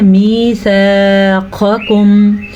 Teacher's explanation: مِيثَاقَكُمْ قاف کو 2 قسم کے قاف ہے, پہلا قاف موٹا اور دوسرا باریک